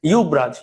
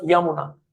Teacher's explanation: অন্তস্থ জয়ের পরিবর্তে ইয়া আসতে পারে অথবা ইউ আসতে পারে।